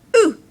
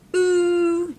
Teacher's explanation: One is short, oo, just like in book. One is long, oo, just like in moon.